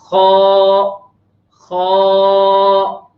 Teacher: खा चूंकि मोटा हरफ है लिहाजा मुंह के अंदर आवाज को भर कर निकाल लेंगे